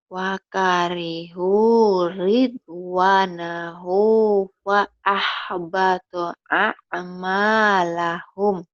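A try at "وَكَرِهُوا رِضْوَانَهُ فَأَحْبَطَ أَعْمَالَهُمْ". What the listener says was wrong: Wakarihu nih ya. Wakarihu ridwanahu fa'ahbata a'malahum. Jangan ada tekanan, jangan ada hentak-hentak ya latihannya ya. Wakarihu, jangan ditekan, jangan dihentak.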